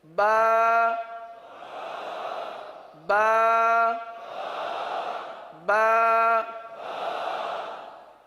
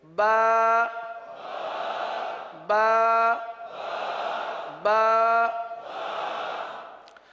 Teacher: با ہونٹوں کے، دونوں ہونٹوں کے تر حصے سے ادا ہوتا ہے